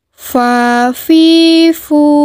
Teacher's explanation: keluar dengan menyentuhkan ujung 2 gigi seri bagian atas dengan bibir bawah bagian dalam diucapkan dengan mengalirkan suara sekaligus bisikan suara dengan udara lembut